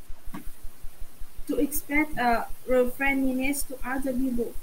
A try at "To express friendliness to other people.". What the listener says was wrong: Okay, let's try that intonation again. Watch how it's, when I say it, it's quite a bit smoother, okay? To express friendliness to other people.